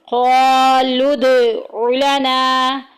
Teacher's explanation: लना में देखें अलिफ पीछे ज़बर आ गई, अलिफ मद्दा का कायदा जारी हो रहा है, एक अलिफ के बराबर लंबा करेंगे